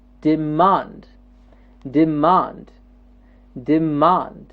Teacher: And the second syllable, the man, gets the stress.